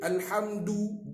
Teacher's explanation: Huruf dal tu bukan huruf tebal. So dia nipih.